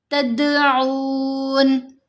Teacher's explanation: هل يسمعونكم، یس سین کو بہت سمودھ رکھیں گے، یسمعونکم اذ تدعون، دال کے اوپر ہم نے کلکلا کیا، اب دال کی آواز تھوڑی ہلے گی